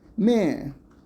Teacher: or instead of man, ma’ with a nasalized /æ/, /æ/ sound